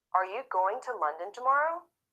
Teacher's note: the content words going London and tomorrow are stressed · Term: regular sentence stress